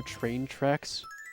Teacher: in the word train and tracks, there is no CH, it's just a T. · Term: the T sound